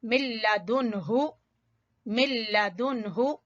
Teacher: नून साकिन के बाद हा, यहाँ कोई गुन्ना नहीं करना, जल्दी से नून को मुकम्मल अदा करके पढ़ के फिर हा